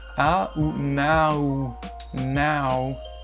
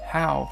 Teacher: c'est une autre diphtongue, c'est le A qui va glisser vers un OU. A ou now, now, comme ici, comment, how, ok, how.